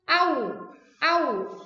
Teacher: Ini kalau yang wawu, ini bibir kalian harus sampai maju.